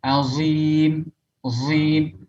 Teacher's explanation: atau membaca dha menjadi sad yang di ismam menjadi huruf zai, ya, seperti membaca dha dengan zai, azim, azim, ya, aliyil azim, azim, azim.